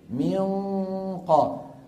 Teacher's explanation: اقصى اللسان اغلق اغلق اقصى الحلق تماما بقي الصوت منين عم يطلع من الخيشوم ولسان المزمار راجع والحلق متضي من هون عم يجي التفخيم من